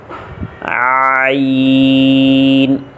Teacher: یہ دو حروف ہیں جن کو حلق کی درمیانی حصے سے ادا کیا جاتا ہے، ایک ہے ح اور ایک ہے عین۔ ان دونوں حروف کو حلق کے درمیانی حصہ سے ادا کریں گے۔